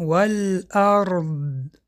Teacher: وقتی که ما حرف داد را تلفظ می‌کنیم پهلوی زبان در دندان‌های کرسی زده به پیش می‌رود. زبان را تیز نمی‌گیریم. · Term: استطاله